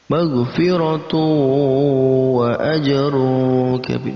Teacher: ada tanwin bertemu dengan wawu, ini masuk dalam kategori idgham bi gunnah, digabungkan dan didengungkan. Selanjutnya wa ajrun kabir, tanwin bertemu dengan kaf, maka masuk dalam kategori ikhfa, kita samarkan bacaannya dengan ang, ajrun kabir.